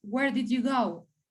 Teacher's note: in this question we also emphasize where and the verb